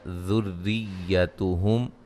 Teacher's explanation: را کو باریک پڑھا جائے گا، را کے نیچے زیر ہے، مشدد ہے را